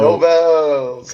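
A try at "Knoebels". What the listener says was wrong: Knobles, all right. I've heard it pronounced a few different ways. I hear most people can pronounce it with the K not being silent, so I assume it's Knobles, but I that's the way I've heard it mostly.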